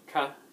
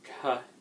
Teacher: So it's just a little extra exhalation of breath. So you have ka, you're not really exhaling very much, and then ka, you're just letting a little more, like about twice as much air out.